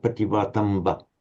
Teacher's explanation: it's a final short, a very short ah at the end. We tend, for a final long ah, we tend to lengthen it in English, but remember, if it's short there in Sanskrit and Pali, it must remain short, pativatamba.